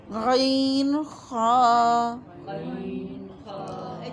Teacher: ادنائے حلق، حلق کا منہ کی طرف والا حصہ، یہاں سے غین اور خا ادا ہوتے ہیں. ٹھیک ہے، یہ منہ کے قریب ہے اور سینے سے دور ہے، یعنی آخری حصے سے دور ہے.